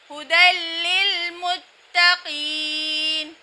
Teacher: تنوین کے بعد لام بلا غنہ ہو رہا ہے یعنی لام پر غنہ نہیں ہو رہا بلکہ ادغام ہو رہا ہے بلا غنہ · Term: ادغام بلا غنہ